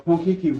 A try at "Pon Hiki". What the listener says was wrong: It's Pon Hiki with an H. He. He like Mr. Galactic Michael Jackson.